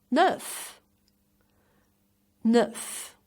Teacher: Pronounce the final F and push lips forward.